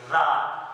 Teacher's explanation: ज़ाल में हमारी जुबान जो है वो ऊपर वाले दांतों के नीचे आ रही थी, ज़ाल। उसके बाद हमने वर्ड पढ़ा ज़ा, तो हमारी जुबान जो है दोनों दांतों के दरमियान में आ रही थी और हम अपने जो है दांतों पर और जुबान जो हरकत पर जोर देते ज़ा।